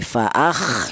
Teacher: jelas bahwa huruf kha ini keluar dari tenggorokan atau halak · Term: idhar